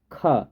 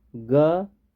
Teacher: ख ज्यादा निकला ग कम निकला हवा